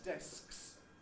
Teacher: Desks sometimes sounds as if the K is entirely gone.